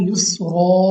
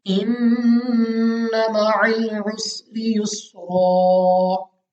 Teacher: तो यहाँ पे जब आप वक्फ करेंगे तो आपने इसको अलिफ से बदल देना है, यानी आपने यहाँ पे लंबा करके पढ़ना है। दो जबर की तनवीन को अलिफ से बदल देना है